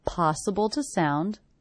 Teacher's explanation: The word to is definitely reduced to the schwa